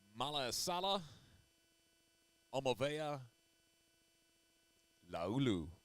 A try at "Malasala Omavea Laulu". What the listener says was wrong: You put that weird little inflection on the end. You were so close.